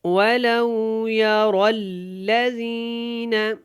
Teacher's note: یہاں پہ را موٹا پڑا جائے گا کیونکہ را کے اوپر زبر ہے, اور ولو کی جو واو ہے یہ لین ہے تو اس کو زیادہ لمبا نہیں کریں گے.